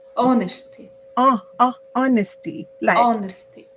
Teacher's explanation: The word, do not try to pronounce the H. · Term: H is silent